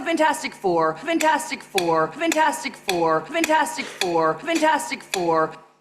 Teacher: she has weakened the first syllable. Far from having a secondary stress on it, she's pronouncing it weak.